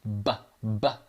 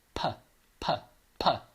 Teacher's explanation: there's another sound like b that brings the lips together and pops them open, but it doesn't have that vocal cord thing going on. If I go p, p, p, I'm breathing through, but I'm not voicing it.